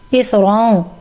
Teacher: तनवीन के अंदर जो नून छुपा होता है उसको नोज में हाइड कर लेना है छुपा लेना है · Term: इफा